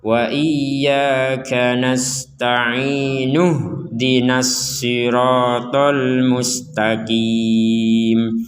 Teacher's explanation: kalau yang hamzah gak ada kepalanya, maka kita gabungkan dan hamzahnya gak terbaca. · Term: hamzah enggak ada kepalanya